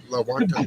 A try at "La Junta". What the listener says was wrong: But it's La Junta. The J is technically an H. It's an H. It's La Junta.